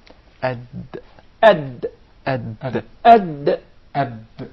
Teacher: The gum line. So when the tongue hits and strikes this part, the gum line of the two upper front incisors, that is exactly the articulation point of the dal.